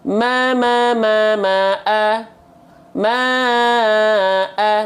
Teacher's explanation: sepanjang seperti kadar melafalkan maanya empat kali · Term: empat harakat